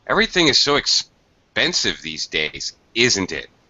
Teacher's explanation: Falling intonation, you're asking for a confirmation, or you're just trying to make conversation and you want the other person to say something. · in this kind of a tag question with an opinion, you most certainly would drop your intonation at the end, lower, like this.